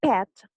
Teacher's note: for the sound p as in I'm pet we can classify it as a voiceless bilabial stop